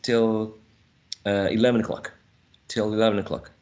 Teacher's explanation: some speakers would use a reduced schwa, or some speakers would continue with the short and laxed e, like till, but would definitely elide the first syllable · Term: elision